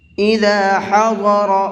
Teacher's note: ضاد کو بھی اور را کو بھی دونوں حرفوں کو پر کر کے پڑھیں گے